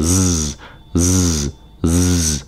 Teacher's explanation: Remember, it takes more effort. It's voiced, so that means your vocal cords in your throat move, and it's a little deeper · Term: Z sound